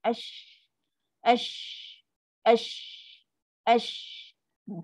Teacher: Kan ada ruang udara, ada boleh lalu. Kalau shin, laluan udara tidak tutup sepenuhnya. Ada laluan udara, maksudnya ada ruang juga nak lalu. Ash. Kan ada lagi udara, sebab tu dia ada sifat angin tu, tafashi.